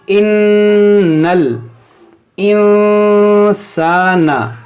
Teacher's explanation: ناک میں آواز جا رہی ہے کیونکہ نون ساکن کے بعد سین جو ہے حروف اخفا ہے، تو یہاں پر جو ہم اخفا کریں گے، یعنی ناک میں آواز لے جائیں گے۔